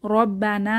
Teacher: না তে এক আলিফ টান হবে